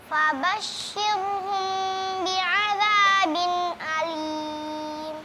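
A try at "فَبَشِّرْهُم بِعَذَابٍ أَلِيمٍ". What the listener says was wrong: Huruf shinnya tipis, ro-nya juga tipis. Jadi jangan fabashshirhum, jadi fabashshirhum ya. Jadi ro-nya usahakan di situ tipis karena sangat mempengaruhi, karena ro-nya tadi agak sedikit tebal, maka suara shinnya juga sedikit tebal. Fabashshirhum bi'adzabin alim.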